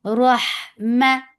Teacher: Ra is heavy for fatha upon jaws attached with ha. Ha will get sifa of hums and rakhawa, and ha should be from your throat nicely. Rahma for fatha upon jaws, the sound is short.